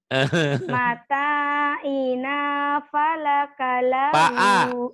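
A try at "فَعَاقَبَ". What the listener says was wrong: Pa'a bukan pakalahu, pa'akalahu kebalik. ini A dulu bukan lam.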